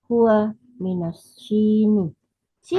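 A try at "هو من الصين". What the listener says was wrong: Sin ya, as-Sini, min as-Sini. Bisot ya dengan sot. Min as-Sin, Sini, Sini.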